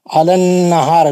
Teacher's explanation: نون پہ غنہ ہے, ہا پہ مد علی النہار ہا پہ مد اصلی ہے.